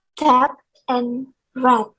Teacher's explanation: The oral passage is blocked by pressing the tongue tip against the alveolar ridge.